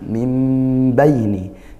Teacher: Berbalik dari huruf nun menjadi bunyi mim baini dan juga dengung ya. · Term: yaqalab